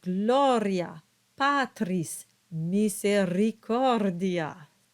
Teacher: R is the same as Italian, and it must be rolled. So you get words like gloria, patris, misericordia.